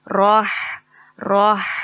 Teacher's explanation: یہ ہا ہمارے حلق کے مڈل پوائنٹ سے ادا ہوتا ہے، ہمارے حلق کے درمیانی حصے سے ادا ہوتا ہے